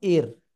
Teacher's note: উর। আবার র সাকিন তার ডাইনে যদি জের হয় তাহলে রটা চিকুন করে পড়তে হবে